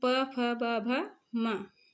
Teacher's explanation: प में हमारा ओष्ठ, मतलब दोनों ओठ स्पर्श करते हैं, इसको हम ओष्ठ वाला वर्ग बोलते हैं।